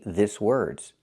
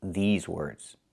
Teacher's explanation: I cannot use the short I like this is. I need the long E like green beans.